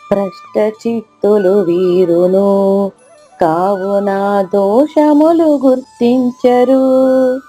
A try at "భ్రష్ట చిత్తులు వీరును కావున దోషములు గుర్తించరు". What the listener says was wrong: అద్భుతంగా పాడారమ్మా. మీరు కూడా డిట్టో హిమ గారి లాగే పాడతారు మీరు కూడా.